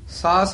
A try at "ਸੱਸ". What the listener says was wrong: ਇਹ ਸਾਸ ਨੀ ਬੋਲਣਾ ਇਹ ਚੰਦਰਮਾ ਦਾ ਨੀ ਵਾਚਕ ਹੈ ਸੱਸ ਦਾ ਵਾਚਕ ਹੈ। ਸੱਸ ਵਿਰਾਇਣ ਨਾਨਕ ਜੀ ਉਹ ਸਸੁਰਾ ਵਾਦੀ ਇੱਥੇ ਵਿਸਰਾਮ।